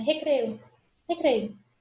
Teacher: Esse izinho a gente quase não escuta a pronúncia dele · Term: semivogal